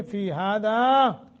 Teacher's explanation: فی کو ایک سیکنڈ کے مطابق مد کرنی ہے، ہذا دونوں جگہ ایک ایک الف کے برابر مد ہے۔